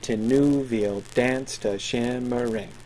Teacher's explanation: He wants to maintain that even iambic beat.